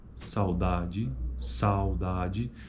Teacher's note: Veja que na primeira sílaba, que é onde ocorre o ditongo é decrescente, por conta que a proeminência acentual é na vogal A. O U meio que some, ele reduz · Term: ditongo decrescente